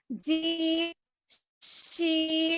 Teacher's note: हमारे बीच वाली जो जबान है वो ऊपर तालू में लग रही है हमारी